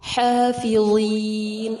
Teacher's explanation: حا کو وسط الحلق سے ادا کریں گے، ضا پر ہوگا اور مد عارض کے ساتھ وقف کیا جائے گا.